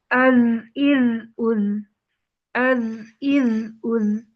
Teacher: اس میں سانس بھی بند ہو جائے گی اور آواز جبکہ جاری رہے گی۔ سانس بند ہو جائے گی کیونکہ حروف مجہورہ میں سے ہے، جبکہ آواز جو ہے وہ جاری رہے گی۔